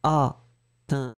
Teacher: la nasale, pour moi, elle est vraiment là, elle se bloque et il n'y a pas de « n »